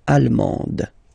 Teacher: you don't pronounce the final D, but then you pronounce it here for the feminine form